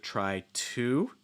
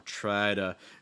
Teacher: more try to so that t in 2 is typically become like a fast d sound because it's surrounded by vowels